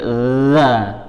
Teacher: Zal itu ujung lidah di antara gigi seri atas bawah, za. Kemudian dia sifatnya juga mengalir, jadi za, bukan hentakan.